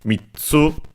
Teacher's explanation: mitsu, accented on the last syllable